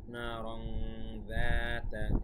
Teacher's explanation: তো দেখতে হবে তারপরের মূল অক্ষর, তাই এটা কিন্তু ইকফা। তানউইনের বাম পাশে দাল এসেছে, যা কিনা একটি ইকফার হরফ, এই জন্য এখানে ইকফা করতে হবে। না রং যাতা, এখানে 1 আলিফ টান দা।